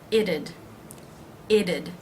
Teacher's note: the apostrophe D adds a syllable it's going to be the schwa and the D sound